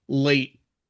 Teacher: And with late, for example, I do use the glottle stop. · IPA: ʔ